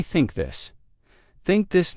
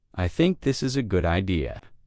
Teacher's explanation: The tongue comes gently between the teeth. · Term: th sound